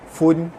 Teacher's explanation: tanwin bertemu ain, hukumnya izhar halki, dibaca terang jelas tanpa dengung